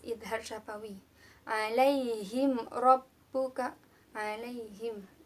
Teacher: ada huruf mim mati bertemu dengan Arok jadi harus dibaca jelas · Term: izhar syafawi